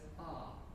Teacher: Instead of the diphthongal I, the Negro says ah.